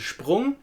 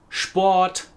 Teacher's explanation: we have an SH sound instead of a normal S sound if you see it in front of a P or a T